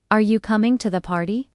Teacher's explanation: when you ask a simple yes or no question in English, your voice usually rises at the end.